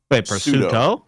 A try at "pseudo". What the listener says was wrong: Pseudo. If you're talking PSUEDO. Not pseudo. The P is silent.